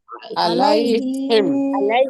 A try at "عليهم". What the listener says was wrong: عليهم না, আইন দিয়ে হবে عليهم عليهم